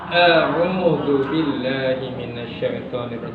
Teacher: Hamzah itu tempat keluarnya adalah di aqsal halqi, ini pangkal tenggorokan. Sifatnya apa? Sifatnya syiddah, kuat ketika dibaca. Jadi tidak boleh diseret kayak gitu seperti rakhawah. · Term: huruf hamzah